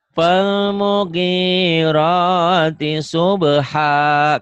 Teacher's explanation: G-nya panjang, rohnya panjang. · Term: mad asli